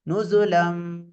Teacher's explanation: கீழ் உள்ள உதடு மேலுடைய உதடுடன் இணைந்து அழுத்தம் இல்லாமல் நுசுலம் என்று ஓத வேண்டும். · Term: இக்லாப்